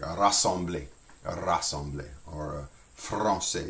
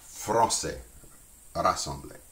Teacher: So if you're having troubles, just try rolling R. We roll it more toward the tips, kind of as similar to Spanish R, but not quite as, I guess, many rolls. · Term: rolled R